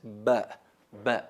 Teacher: La letra ba se pronuncia pegando los labios